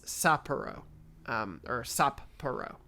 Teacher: Japanese pronunciation of Sapporo is maybe a little unusual for English speakers because there's a pause between the 2 P sounds, essentially to pronounce both, I think, similar to the pause between the Z's in pizza, which I emphasize the pause there. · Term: double consonant